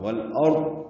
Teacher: والارض میں لام ساکن پہ اظہار، را پر اور وقفاً ضاد پر ہے اور اس پہ اظہار ہوگا. والارض، ضاد ہلے نہیں، ضاد کی آواز پہ قلقلہ نہ ہو